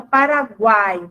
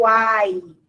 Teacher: O tri significa três, né? Então, o tritongo é o encontro dos três aí, da semivogal, vogal mais semivogal, nesta ordem